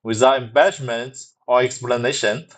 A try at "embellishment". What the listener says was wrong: You're still saying embedment instead of embellishment and observed instead of observer. You're also saying when state is instead of when stated.